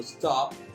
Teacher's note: que miren que el golpeo más fuerte lo hago en la O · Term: vocal acentuada